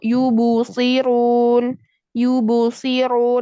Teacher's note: qalqalah ba-nya terbawa ke huruf dhammah